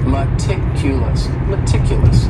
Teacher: stress is on that second syllable